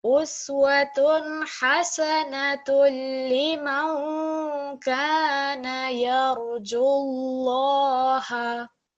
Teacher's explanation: the emphasis is on the lam mushaddad. We give the stress to this lam. We're not going to be prolonging the ju. It will be jullaha.